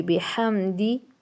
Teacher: بحمد لمبا نہیں کریں گے کیونکہ میم ساکن کے بعد با بھی نہیں آ رہی ہے، دال آ رہی ہے. ٹھیک ہے، با اور میم کے علاوہ دال آ رہی ہے، اس لیے بحمدی جلدی سے.